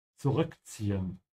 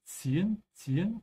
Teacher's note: Make sure whenever you pronounce this word, which has two Z's, to pronounce the T. There's a T sound in the Z.